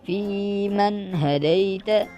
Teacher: فاضل یا فی، میم زبر نون من، فی من، ہ زبر ہے، دال زبر یا دئی، تا زبر تے، فی من ہدیت. ابھی فی من ہدیت ادھر گنہ نہیں کریں گے آپ، بالکل بھی گنہ نہیں ہوگا